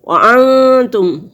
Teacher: 2 الف کے برابر ناک میں آواز کو چھپائیں گے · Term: اخفا